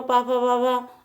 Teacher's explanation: प वर्ग पूरा पा फा बा भा, ये ओष्ठ व्यंजन कहलाते हैं